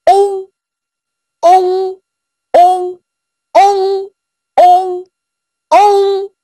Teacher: 要先发窝的音，然后慢慢的变成鼻音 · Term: 后鼻韵母